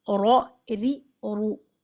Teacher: र जब जबर के साथ होगा तो मोटा र और जेर के साथ होगा तो बारीक री और पेश के साथ होगा तो मोटा र रो री र